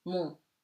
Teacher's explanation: M before a consonant at the end of the word, as the M is eaten, is nasal.